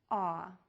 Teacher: of a word law to make this short static vowel sound your mouth is open wide there are some variations on lip rounding your lips can be slightly rounded or more rounded depending on · Your lips can be slightly rounded or more rounded depending on the word. The tongue is low and pulled towards the back of the mouth. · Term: aw sound, AW sound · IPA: /ɑ/